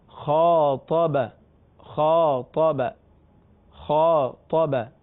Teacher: جب حروف مستعلیہ کے بعد الف آ جائے تو ظاہر ہے کہ جب آپ خا کو بڑا کرنے جائیں گے تو الف بھی پر ہو جائے گا، اور آگے طا ہے وہ بھی حروف مستعلیہ میں سے ہے.